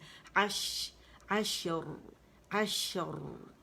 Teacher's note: عش، اس میں توسط ہے عین میں، اور اس میں کیا ہے کیونکہ ساکن پہ ساری خوبیاں واضح ہوتی ہیں تو اس میں شاورنگ ساؤنڈ آپ کو آئے گی